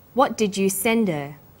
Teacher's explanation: highlighted words here's the first one what did you send her send is the strong form and her is weak because her is not stressed we drop the initial hurt sound